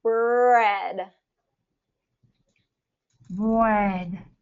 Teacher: my lips are rounded and they're kind of forward there. But at the same time, my tongue is pulling back.